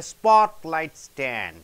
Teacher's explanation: So, spot is stressed more.